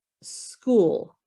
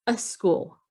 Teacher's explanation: so with different accents and pronunciations from their mother tongue so some people put an uh at the beginning and they say a school because the sk doesn't come easily